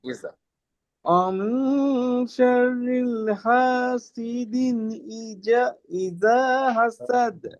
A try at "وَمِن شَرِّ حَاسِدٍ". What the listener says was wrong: এখানে খেয়াল করেন ওয়ামিং শাররিল শোনা যাচ্ছে এরকমটা, ওয়ামিং শাররি হাসিদিন এরকম হবে। ওয়ামিং শাররি।